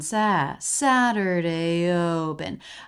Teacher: it goes up a little bit and then down